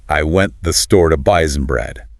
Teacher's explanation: The stress is on went, store, and bread.